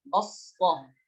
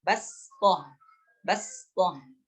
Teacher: Ya, perhatikan cara bacanya, sin dengan shad dibedakan. Kemudian shad tidak boleh dimonyongkan bibirnya ya. Tidak boleh dimonyongkan karena dia bukan termasuk makhraj yang keluar dari bibir, melainkan dia keluar dari lisan. Makhrajul lisan.